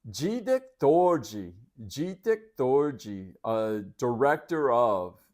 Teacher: So they pronounce the D there like the J, which I didn't expect that at the beginning of a word.